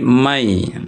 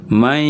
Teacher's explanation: Kalau bi gunna, setelah ia dilebur, setelah ia digabung man dengan ya, diikuti dengan gunnah atau dengan dengung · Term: idgham bi gunna